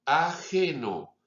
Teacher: nuestro sonido de J, nuestro sonido velar, sordo